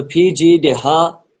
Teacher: یہ والے ہا کو بھاری پڑھیں گے, حلق کے نچلے والے حصے سے ادا ہوتا ہے